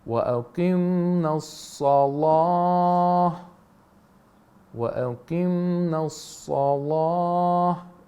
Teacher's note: He has a rising intonation on the word as-salah.